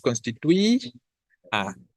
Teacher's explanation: la tonicidad va específicamente sobre la vocal I de manera concreta, ¿vale? Y es esa la sílaba tónica.